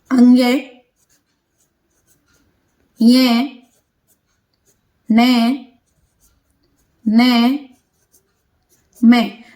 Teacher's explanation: जब हम इनको बोलेंगे तो हमारी नाक में थोड़ा सा गुंजन होगा, आवाज सी गुंजेगी, तो इसीलिए ये क्या कहलाते हैं, नासिक्य व्यंजन कहलाते हैं।